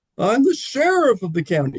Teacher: I tried to raise my register, speaking a higher voice